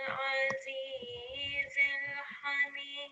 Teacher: So even though here it appears with a kasra, because we're making a stop here, in this circumstance, the dal will take a sukoon when we pause. So even when it's in this condition, then also we are going to vibrate that final dal slightly. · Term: dal kalkala